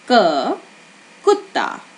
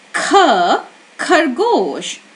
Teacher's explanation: did you feel your breath escaping your mouth, touching your hand when you say kh? And when you say k, you would not feel it. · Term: aspirated sound